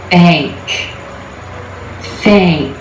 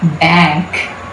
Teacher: what you're gonna hear is more of an a as in gray sound